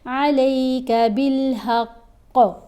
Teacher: قاف کے اوپر ہم نے کلکلا کرنا ہے، یعنی آواز کو ہلا کر پڑھا جائے گا